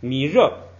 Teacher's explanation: 后边这个热本来是升降调，后不升不准升就直接变成降调